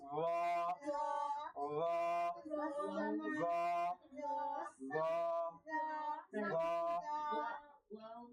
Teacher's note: জিহ্বার আগা সামনের উপরে দুই দাঁতের আগার সঙ্গে লাগিয়ে উচ্চারণ করতে হবে